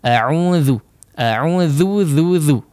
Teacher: huruf dzal jangan sampai menebal. A'udzu, a'udzu ya, ditipiskan tipis saja ya. · ditipiskan tipis saja ya. Tidak perlu menebal. Kalau menebal jadi dha ya.